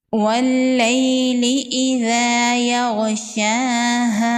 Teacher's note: لام پر تشدید ہے، لام کو ڈبل پڑھیں گے۔ یا لین ہے، اس کو نرمی سے پڑھیں گے اور جلدی پڑھیں گے۔ ذال کو نرمی سے پڑھیں گے۔ · غین حروف مستعلیہ میں سے ہے، غین کو پر پڑھیں گے